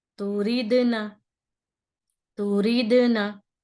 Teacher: د, د, یہ آواز پلٹ کر آ رہی ہے. تو قلقلہ, یہ قلقلہ ضروری ہوتا ہے کرنا, اور اس سے قرأت میں بہت خوبصورتی پیدا ہوتی ہے.